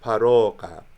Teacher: It would be a mid-back rounded vowel today, an O sound. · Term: ruacha